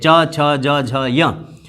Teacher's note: उच्चारण स्थान होता है तालव्य, तालु, तो ये तालव्य होते हैं, च, छ, ज, झ, य।